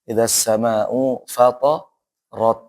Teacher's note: Ro-nya tuh tebal ya, bukan ra.